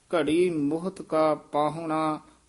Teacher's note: ਇਹਨੂੰ ਮੁਹਤ ਪੋਲਾ ਹੀ ਉਚਾਰਨ ਕਰਨਾ ਮੁਹੱਤ ਨਹੀਂ ਕਹਿ ਦੇਣਾ